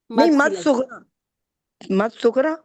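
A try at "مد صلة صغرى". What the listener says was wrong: सिला भी कहेंगे बीच में, बीच में सिला भी कहेंगे, सिला। मद सिला सोगरा।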